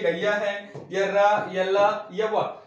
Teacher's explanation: उच्चारण के समय जीवा जो होती है मुख के किसी भी भाग को पूरी तरह से स्पर्श नहीं करें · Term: अंतस्थ व्यंजन